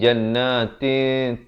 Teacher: Disamarkan bunyinya itu kadar panjang 2 harakat. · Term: ikhfa